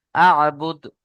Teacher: বুদ এখানে টান হয়ে গিয়েছে, বুদ টান হবে না, আ'বুদ, বা দাল পেশ বুদ জলদি পড়তে হবে।